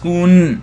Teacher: there's no vowel there on that second consonant, but instead it would be absence of vowel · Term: sukun